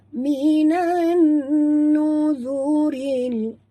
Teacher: masukkan bunyi nun ini terus ke dalam nun berikut ni tanpa membunyikan alif lam. Ini dinamakan idgham syamsi atau alif lam syamsiah ya.